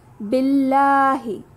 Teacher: اللہ کے لام سے پہلے زیر ہے، لام جلالہ باریک پڑھیں گے اور ہمیں کھڑا زبر نظر آ رہا ہے تو 2 کا مد دیں گے۔